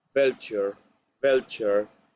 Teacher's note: This is the consonant V, V, a labiodental consonant, which is really soft.